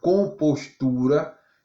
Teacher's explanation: compostura, eu demoro mais tempo no tu. Então, a parte silábica que eu demorar mais tempo, o tu, então essa parte aí vai ser a tônica e todas as outras vai ser átona.